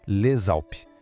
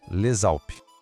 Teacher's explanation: Le termina com um S que a gente não fala e Alpes começa com uma vogal. Nesse caso, a gente junta as duas palavras e o S passa a ter som de Z. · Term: liaison